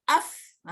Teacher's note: Fa ni huruf dia ujung gigi depan menyentuh perut bibir bawah.